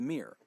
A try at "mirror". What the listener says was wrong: Are you saying mirror? Mirror? Like a cat? Mirror. There's 2 syllables. Mirror.